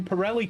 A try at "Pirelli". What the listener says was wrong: Can I request that every time you say Pirelli now you roll the R's?